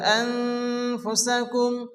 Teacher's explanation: নুন সাকিনের পরে হরফ ফাসে এগালিফ গুণ হবে